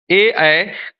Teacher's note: तो ए ऐ का उच्चारण स्थान कंठ तालु होगा।